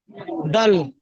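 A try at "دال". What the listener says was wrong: দাল নয়, দাল, মাঝখানে টান দিতে হবে।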